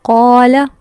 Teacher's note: یہاں ہم قا کو لمبا کریں ہیں، لام کو نہیں کریں کیونکہ لام کے آگے الف نہیں ہے